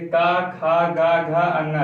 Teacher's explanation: का वर्ग का जब हम उच्चारण करेंगे तो कहाँ से इसका जो स्पर्श होगा, कहाँ से स्पर्श होगा? कंठ से।